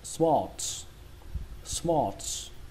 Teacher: Cách đọc thứ hai của từ này, các bạn đọc cái âm A này nó nghe hơi giống âm O một chút.